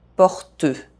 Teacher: if I pronounced the last E, I would have to add a syllable.